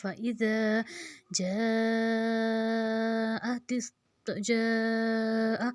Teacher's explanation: جیم کے اوپر زبر، آگے الف مدہ، مد، اور اس کے آگے حمزہ، تو 4 حرکت کھینچیں گے